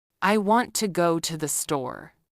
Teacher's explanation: Notice that want, go, and store are stressed while to and the are weaker. This creates a natural rhythm. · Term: sentence stress, Sentence stress and rhythm